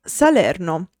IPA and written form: saˈlɛrno (Salerno)